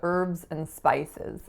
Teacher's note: the H is not pronounced in most varieties of American English